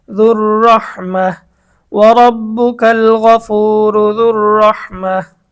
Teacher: গোলতায়ের উপরে যখন অক্ফ করা হয়, থামা হয়, তখন ওই গোলতাটা হা হয়ে যায়। আর যে হরফের উপর থামা হয় সেটা সাকিন হয়ে যায়।